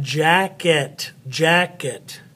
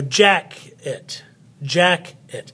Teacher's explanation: the accent goes on the first part of the word jacket so it's more loud than the other part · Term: unaccented final syllable